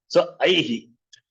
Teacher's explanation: That is why I, when you say the sound is E, and the Visarga following that will take the sound of the preceding vowel, which is He.